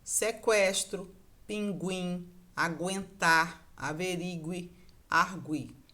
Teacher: Eu continuo pronunciando esse U, apesar de não ter mais o trema